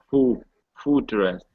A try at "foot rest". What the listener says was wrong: almost you're saying Fu fot okay so when you're saying this word you need to open your mouth